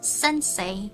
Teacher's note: you stress sen for some reason